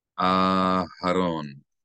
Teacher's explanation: we elongate the first syllable of Aharon